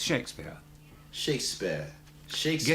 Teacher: That's the way the word's pronounced. We just don't say the R sound.